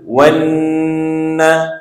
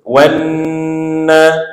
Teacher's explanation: Nun tu pula, bila ingat balik formula kita, bila nun tu ada sabdu, maka bacaan kena didengungkan dengan kadar dua harakat. Sebab itu baca wanna.